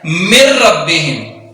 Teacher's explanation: نون کو پڑھا ہی نہیں جائے گا، یعنی کہ اس قدر مدغم کر دیا جائے گا کہ ظاہر ہی نہیں کیا جائے گا۔ تو یہاں ہم نے پڑھنا ہے من ربہم، یعنی نون کو اتنا مدغم کرنا ہے، اتنا چھپانا ہے کہ ظاہر ہی نہیں کرنا، ڈائریکٹ را کو ظاہر کرنا ہے، من ربہم۔